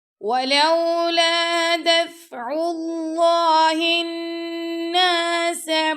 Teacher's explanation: دفع اللہ الناس، نون پر ہم نے غنہ کیا